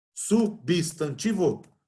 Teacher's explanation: Vocês concordam que substantivo, a sílaba tônica é o ti?